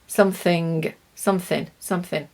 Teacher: It's very, very common that we don't pronounce the G at the end of words with the ing. We say in. We miss the G.